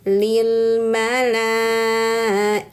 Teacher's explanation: Lihat fathah berdiri ni mad thbi'i bertemu hamzah dalam satu kata. Nah, ini panjangkan lamnya empat harakat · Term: mad wajib muttasil